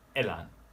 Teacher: Notice how I sort of like sharply enter the A in elan.